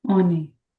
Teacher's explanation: Liaison, which is linking the vowel to the consonant.